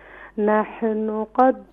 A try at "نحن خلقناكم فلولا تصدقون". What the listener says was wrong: نہیں, یہاں پر قلقلہ نہیں کریں گے.